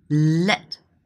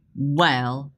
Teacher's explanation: At the beginning, we call it clear L. At the end, we call it dark L.